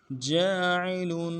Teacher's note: جیم کے بعد الف مدہ ہے، ایک الف مقدار میں کھینچیں گے، عین کو نرم سے ادا کریں گے۔ لام کے اوپر تنوین ہے، غنہ کریں گے، غنے کو ایک الف مقدار میں کھینچیں گے۔